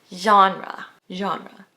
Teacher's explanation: The right pronunciation is genre. It's like an sh sound with your voice added into it, like genre.